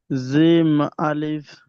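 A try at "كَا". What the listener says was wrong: এটা হলো কাফ আলিফ, জিম নয়, কাফ আলিফ, কাফ আলিফ।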